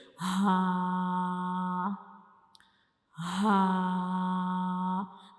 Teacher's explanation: गले के बिल्कुल नीचे वाले हिस्से से हमने इसको अदा करना है। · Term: हा का मखज